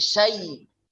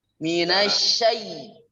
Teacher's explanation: Ada angin menyebar di mulut ya. Tidak perlu bantu oleh bibirnya ya. Cukup di lidahnya itu menyebar banyak angin.